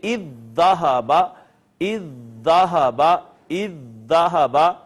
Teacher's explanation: پہلی دال کو ہم نے دوسری میں ضم کر دیا تو یہاں پہ آ گئی شد، لہٰذا اب اس کو اذ ذہب کی بجائے ہم پڑھیں گے اذ ذہب، اذ ذہب، اذ ذہب۔ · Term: ادغام متماثلین